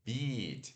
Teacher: O I longo, o I que a gente sorri e segura